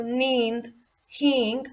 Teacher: हालांकि इन पर एक बिंदु ही लगा है, अनुस्वार ही, लेकिन इनमें अनुनासिक की साउंड आ रही है